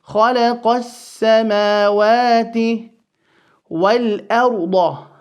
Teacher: The lam of al once again falls away because of the fact that it is followed by the sin.